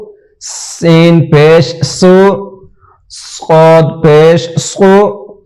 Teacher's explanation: یہ دو حروف جو ہیں سین اور صاد سیٹی والے حرف ہیں، اس کو ہمیشہ سیٹی دے کے ہی ادا کریں گے